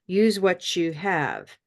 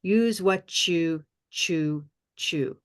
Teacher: of a changed connection not exactly a link but a change this T becomes almost like a CH sound